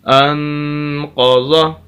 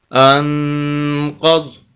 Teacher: اگر وقف کرنا چاہیں تو آخری حرف جو ضاد اس کو ساکن کر دیں تو وقف ہو جائے گا